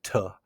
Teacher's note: Sometimes it's a strong aspirated T like t. Sometimes a soft flap sound.